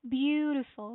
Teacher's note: The stress is on the first syllable, which is beau.